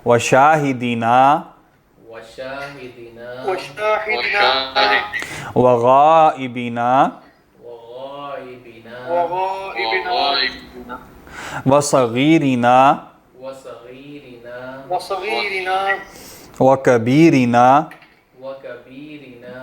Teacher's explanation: اب یہ سب نون جمع والے ہیں، لمبا کریں گے، ٹھیک ہے، ایک الف کے برابر